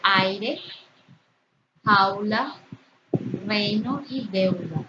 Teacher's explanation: Tenemos ahí la unión de una vocal que es abierta con una cerrada átona. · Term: diptongo